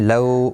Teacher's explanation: واولین ہے تھوڑا نرمی کے ساتھ کھینچ کر ادا کریں گے. ان نون مشدد پر غنہ ہوگا.